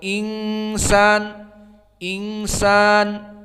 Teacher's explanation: Inna inna, kedua al insan insan, maka keduanya di makhraj khaysum, tidak di nun asli di al-lisan